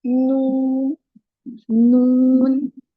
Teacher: Noon sound comes when the edge of the tongue touches the gums of the upper three front teeth.